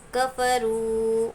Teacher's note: واو ساکن سے پہلے پیش، واو مدہ ہے، واو مدہ کو ایک الف کے برابر کھینچیں گے.